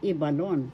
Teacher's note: first syllable is where the accent is